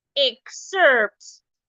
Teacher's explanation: because this word is a noun the rule says that the first syllable the E ex should be stressed